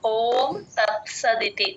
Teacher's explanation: ఓం అచ్చు అది కంఠంలో నుంచి రావాలి ఓం తత్సదితి తత్ ఇక్కడ స కింద స లాగా చెప్పేస్తూ ఉంటారు తత్